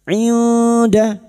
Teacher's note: Kita samarkan bunyi nun sukun dan mendengung selama 3 harokat. Bertemunya nun sukun atau tanwin dengan 15 huruf ini, termasuk huruf dal ikhfa hakiki.